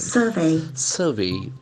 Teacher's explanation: in the word survey, the middle R is silent. Survey. Survey, and we can hear the A sound prominently.